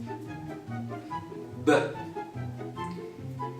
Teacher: it happens with the contact of your upper and lower lips which create a complete obstruction of the aam but at the end this pressure is released